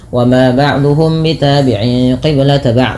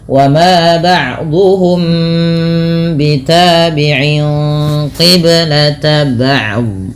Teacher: Ini merupakan bacaan ikhfa syafawi, perlu ditahan dalam membaca nya.